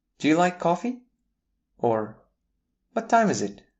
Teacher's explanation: Interrogative intonation. The pitch rises at the end of yes no questions and wh questions.